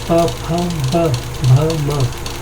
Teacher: ओष्ठ से उच्चारित होते हैं